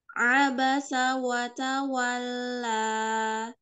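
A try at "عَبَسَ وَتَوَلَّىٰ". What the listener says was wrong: Tapi lah yang ujung, coba jangan lemah, jangan lemah. Abasa wa tawalla. Jadi ketika dua harokat tahan dua harokatnya.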